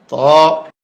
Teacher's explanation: জিহ্বার আগা উপরের দাঁতের গোড়ায় ভিতর দিয়া ধাক্কা দিয়ে মুখ খুলে দিবে